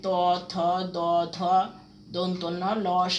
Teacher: এগুলো হচ্ছে দন্ত বর্ণ, কারণ দাঁতের সাহায্য লাগে